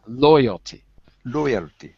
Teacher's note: by the way listen to the stress in the word loyalty stress is on the first syllable